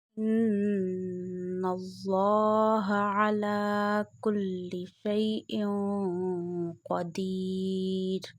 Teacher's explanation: When noon has a tashdid sign on it, then you take noon sound into the nose and stretch up to one alif. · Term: noon mushaddad gunna